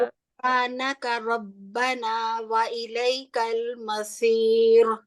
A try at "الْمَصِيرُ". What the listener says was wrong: را کو موٹا نہیں کرنا، مسی سواد کو موٹا کرتے ہوئے را کو باریک رکھنا ہے.